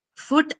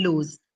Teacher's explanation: First one having the short oo and lose having the long u